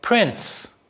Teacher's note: in the word prince, the t is not even spelled, but nonetheless, it is pronounced.